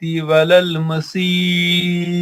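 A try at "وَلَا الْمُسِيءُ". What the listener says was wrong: نہیں مسیح نہیں پھر ولل مسیح کی ہاں پیش پڑھیے.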